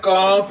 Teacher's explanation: کاف باریک ہے، کاف کے اوپر زبر ہے، کا کو بغیر کھینچے پڑھیں گے۔ یہ کاف باریک ہے، اس کو باریک ہی پڑھنا ہے، موٹا نہیں کرنا